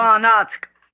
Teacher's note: I think it's just getting from the A sound to the N sound. I don't think there's an actual stop.